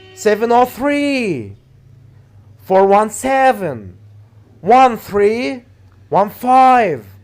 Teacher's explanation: we put the stress on three after that seven after that three after that five